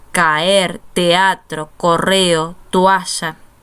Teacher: hay una secuencia de dos vocales en sílabas distintas una vocal abierta más otra vocal abierta caer teatro correo toalla